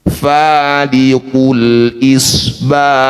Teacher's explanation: Ada udara lembut yang mengalir ketika bunyikan ha sukun.